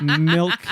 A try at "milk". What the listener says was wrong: why so much emphasis on the K when you say milk